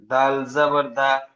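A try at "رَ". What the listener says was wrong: দাল নয়, র রয়েছে। দালের আকৃতি কেমন দেখেন।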